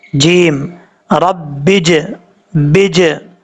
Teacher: जीम का मखरज है ज़ुबान का दरमियान ऊपर वाले तालु से लगे तो जीम पढ़ा जाता है